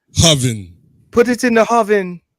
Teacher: the Jamaicans what they do is they add a h in front of a vowel